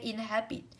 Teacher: Inhabit của cô chúng ta sẽ là động từ 3 âm tiết không rơi âm tiết đầu